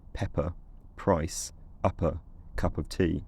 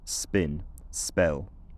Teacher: so it's aspirated in Pepper price upper cup of tea but it's unaspirated in spin spell